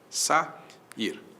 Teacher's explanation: vogais que vêm em sequência e que se separam, ficam em sílabas distintas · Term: iato